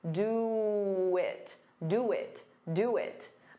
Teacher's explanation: To get rid of that pause, you can add a very soft W.